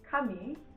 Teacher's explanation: I put the stress on the first syllable here again